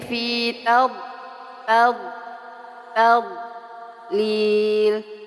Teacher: hati-hati ketika membaca D sukun tidak dipantulkan